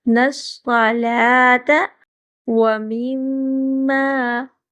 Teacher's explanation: میم پہ غنہ ہوگا اور تھوڑا سا لمبا کریں گے، آگے الف ہے۔ رزقناہم، را کو پر کر کے پڑھیں گے۔